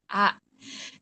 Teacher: Ada hamzah, yaitu berasal dari pangkal tenggorokan atau bawah tenggorokan. Kita bisa merasakan huruf ini kalau kita sukunkan A.